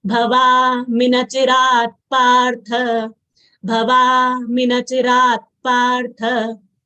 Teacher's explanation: In nachirat partha, tha is also a mahapran letter and we should exhale while saying tha. It should not come out as tha.